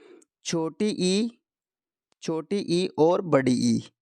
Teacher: छोटी ई और बड़ी ई इन दोनों का उच्चारण होगा तालव्य से